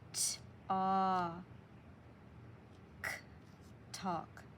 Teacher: You don't really hear the L sound